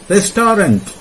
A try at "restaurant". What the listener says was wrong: It's restaurant. Restaurant. You don't have to stretch it too much. You're going to have to just stretch it like this much, like restaurant.